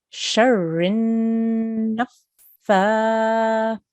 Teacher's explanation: the fa has a vertical kasra. So we need to now elongate that for 2 seconds.